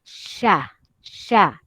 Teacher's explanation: dia berkenaan dengan Tengah lidah yang bermain hampir kena kepada lelangit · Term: tafasyi